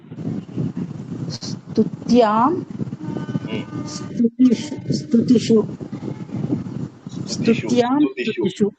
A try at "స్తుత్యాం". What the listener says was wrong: స్తుత్యాం, స్తుత్యాం మంచిగా దీర్ఘం ఉండాలి.